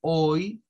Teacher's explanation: el sonido hoy que es como una O con una I es un sonido largo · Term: diptongos